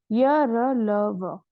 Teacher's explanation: य र ल व ये जीवा का मुख के किसी भी भाग से स्पर्श नहीं होता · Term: अंतस्थ व्यंजन